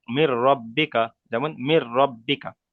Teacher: নুন সাকিনকে র এর সাথে মিলিয়ে বিনা গণ্যায় পড়তে হবে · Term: ঈদগামে তাম